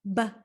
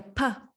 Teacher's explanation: the same part the difference between these two letters is that the ba is voiced our vocal chords vibrate when we make a b sound whereas the p is voiceless our vocal chords do not vibrate